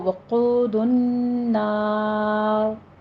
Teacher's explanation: آخر میں را جو ہے ہماری مرقق ہے، ناری ہے، لیکن جب ہم اس کو وقف کرنے لگے ہیں تو یہ را وقف کی کنڈیشن میں پر ہو جائے گی، کیونکہ را ساکن پیچھے فتح آ رہی ہے، تو وقود النار۔